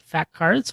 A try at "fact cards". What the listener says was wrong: Now, are you saying fact cards? Okay, because where I'm sitting, it sounds like you're saying fat cards.